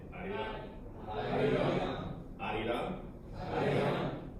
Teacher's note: It's actually an L in the Korean alphabet, but I don't know when it's romanized. I think it's more like a flipped R.